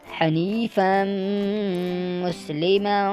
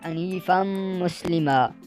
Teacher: فا دو زبر اس کے آگے الف لگایا ہوا ہے لیکن الف کاؤنٹ نہیں کیا جاتا، اس کو ڈائریکٹ میم سے ملایا جاتا ہے، میم کے اوپر شد ہے تو اس لیے یہ ادھر بھی گنہ ہوگا۔ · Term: ادغام